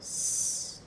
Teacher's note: ela é uma fricativa alveolar desvozeada